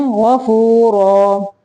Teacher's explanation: یہاں پہ بھی اظہار کا قاعدہ ہے، تنوین کے بعد غین آ گیا ہے، اظہار حلقی میں سے عفوا تنوین کو ظاہر کرنا ہے